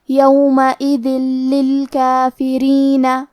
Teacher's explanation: لام حروف الادغام بغیر غنہ میں سے ہے تو ہم یہ تنوین کو لام میں ملا کے بغیر غنہ سے لیکن تشدید کے ساتھ یہ حکمے کو ادا کریں گے